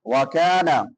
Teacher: کاف باریک ہوگا اور کاف کے بعد الف مدہ ہے